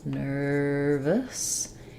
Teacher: the Nur syllable has our stressed R sound